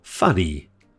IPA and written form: ˈfʌ.ni (funny)